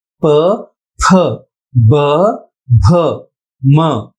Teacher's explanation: प वर्ग का उच्चारण होठों से होता है